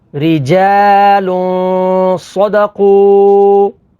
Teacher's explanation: تنوین کے بعد صاد ہے، صاد حروف اخفا میں سے ہے، تو یہاں پر اخفا یعنی غنہ کر کے پڑھیں گے